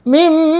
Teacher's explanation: Ketika kita menemukan mim bertasdid, maka harus dibaca gunna, ditahan 2 harokat.